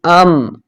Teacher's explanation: ہونٹوں کے خشک حصے سے، یہ جو باہر کا حصہ ہے یہاں سے ادا ہو رہا ہے